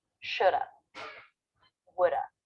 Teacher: we're reducing the a vowel to the schwa and we're dropping the v sound all we're left with is the schwa shoulda woulda note that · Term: reduction